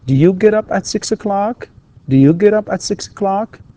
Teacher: يعني في هنا ارتفاع في نبرة الصوت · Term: rising intonation